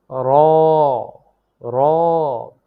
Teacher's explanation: জিহ্বার আগার পিঠ তার বরাবর উপরের তালুর সঙ্গে লাগিয়ে উচ্চারিত হয় র